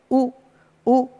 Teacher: हमारा मुंह गोल हो गया होठ हमारे गोल हो गए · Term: वृत मुखी